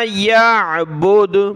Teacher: जब रुकेंगे तो यहाँ हमने दाल पर कलकला कर लिया, क्योंकि दाल कलकला का हरफ है और इस पर जब सुकून आ गया, वक़फ़ आ गया तो कलकला हो जाएगा।